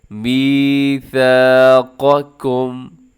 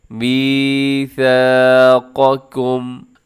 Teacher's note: آگے قاف کو موٹا پڑھنا ہے، پھر اس کے ساتھ بالکل متصل جو دوسرا کاف ہے اس کو اپنے باریک کرنا ہے۔